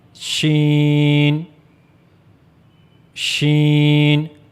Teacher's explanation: for pronouncing sheen, you have to use the middle of the tongue, and you will go to the roof of the mouth